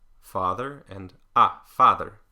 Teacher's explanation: the Australian dialects use an open front unrounded